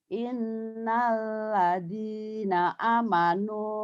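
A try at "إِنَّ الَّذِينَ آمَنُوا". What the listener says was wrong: panjang. Innalladzina mad badal. Amanu panjang.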